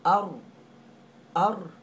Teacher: ra itu mati sebelum berbaris di atas kita baca dengan tebal